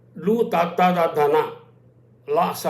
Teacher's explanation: లు తాత్తాదాన లాస్ అనేటువంటివి దంచములు, అంటే దంతాల యొక్క సాయంతో ఉచ్చరింపడతాయి